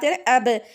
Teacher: तो वो बा से दोनों होठ टकराए मिले आपस में। फिर खुल गए। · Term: आवाज की बाउंसिंग